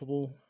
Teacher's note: را موٹا کرنا ہے، پیش میں ہونڈوں گول کرنا ہے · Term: را پیش